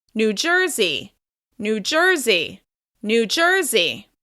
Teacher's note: the stress will be on the second word. It's on the first syllable of the second word.